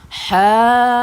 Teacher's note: Bila cukup saja 6 harakat, terus masuk pada huruf jim yang bertanda sabdu.